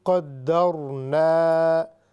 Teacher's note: قدرنا، نا کو ہم نے لمبا اس لیے کیا کہ یہ الف مدہ ہے